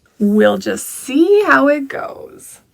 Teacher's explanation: Notice the intonation rises see on the stressed word that I chose, and everything after that word falls down in pitch.